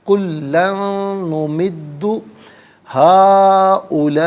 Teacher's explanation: یہاں یرملون کا جو قاعدہ ہے وہ اپلائی ہوگا. کلن میں جو کاف ہے اسے باریک کر کے پڑھا جائے گا